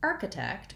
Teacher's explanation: in the word architect we have first syllable stress and that means that the arc syllable is stressed